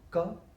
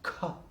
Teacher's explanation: ka, which is articulated with minimum breath release. The same sound, when you release with maximum breath, it becomes kha. Then in the case of ka and kha, the vocal cord is tight.